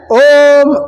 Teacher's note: प्लूत उस शब्द को कहते हैं जिसके उच्चारण में तिगुना समय लगे